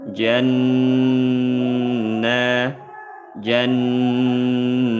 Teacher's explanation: Mim sukun berjumpa dengan jim, izhar syafawi, dibaca jelas. Lahum jan, ada nun tasydid dibaca dengung, gunnah musyaddadah, dengungkan dua harokat gunnah.